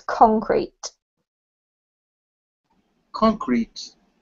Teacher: has the emphasis on the first syllable